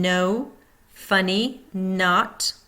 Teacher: tongue tip on bony ridge between teeth, continuous flow of air and sound through nose.